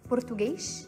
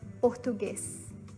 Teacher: people from Rio tend to pronounce the S at the end of words as a sh sound, like in Portugal.